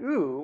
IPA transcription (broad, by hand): ɯ